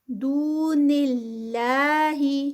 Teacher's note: دو پہ واو مد کیونکہ واو سے پہلے پیش ہے، 2 کاؤنٹس